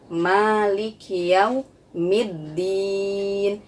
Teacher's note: pada huruf Ma itu dibaca panjang dua harokat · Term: panjang 2 harokat